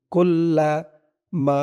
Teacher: কুল্লামা, কাফ দিয়ে লাম ধরবে, কাফ লাম পেশ কুল লাম জবল্লা। কুল্লা মা, মা একালিফ টান, জবরের পরে খালি আলিফ